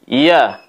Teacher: ya diucapkan pada saat fathah kita baca seperti ini, ya, dengan cara menekan tengah lidah ke langit-langit atas.